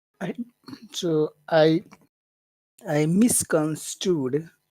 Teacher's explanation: Strood is definitely the accented syllable, but miss is also a very important syllable here because it means it's really the focus like it something was wrong. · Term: two very important syllables